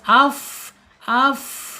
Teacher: fa-nya ketika sukun akan muncul sifat hamas · Asyafatain kan 2 bibir, tetapi kaidahnya fa ini beda, yaitu ujung seri bagian atas menyentuh perut bibir bagian bawah. Jadi hamsnya, sifat hamsnya tidak hilang. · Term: sifat hames